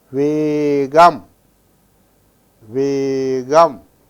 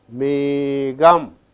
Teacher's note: that ka in the middle, that is after another letter, it assumes the sound ga